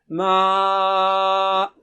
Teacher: ناک سے آواز نہیں آنی چاہیے سوائے غننے کے, اور یہاں غنہ نہیں ہے